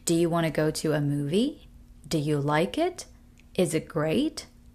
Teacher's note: When we're expecting a yes or no answer from the other person, by asking them a question, usually those questions would have a rising tone